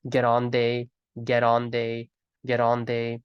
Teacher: the letter T in the word get turns into this Gujarati ra sound, or the Spanish R for that matter as well.